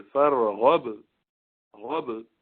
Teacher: با کو ذرا جلدی بند کر دیں گے، لیکن آگے قلقلہ کریں گے